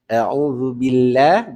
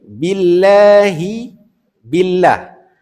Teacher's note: Kalimah Allah pada kalimah al-isti'azah dan kalimah basmalah dua-duanya dibaca dengan tarqiq, dengan nipis.